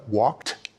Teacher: When we say he walked, we pronounce the ed like a t